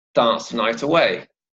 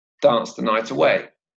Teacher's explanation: there's a stress on the word dance